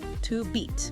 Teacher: And that little two before beat becomes unstressed, just a quick t to beat.